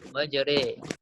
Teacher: Jadi bukan ra, bukan ri tapi re, majre. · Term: imalah